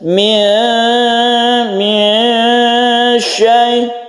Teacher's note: Min syai. Jadi ketika kita membaca nun kita panjangkan, kita rongga mulut kita sudah siap membaca shin ya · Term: ikhfa